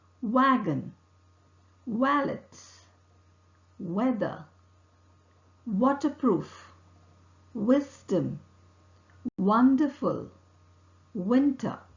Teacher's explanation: raising the back of the tongue towards a soft palate the lips are closely rounded and the vocal cord vibrates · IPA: /w/